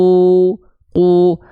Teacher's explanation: huruf qof dia pangkal lidahnya menyentuh semuanya ke langit-langit yang pink saja langit-langit lunak